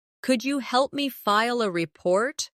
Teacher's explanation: Could you becomes could ya in natural speech.